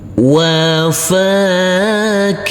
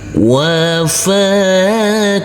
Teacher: Kalau di sini yang pertama, karena ini bacaan idgham bi gunnah, nanti huruf ta marbutah yang berkasrah tanwinnya langsung masuk ke huruf mim. Huruf mim baru nanti kita tekan, kita tahan serta kita dengungkan.